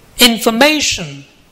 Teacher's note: the third syllable is stressed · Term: word stress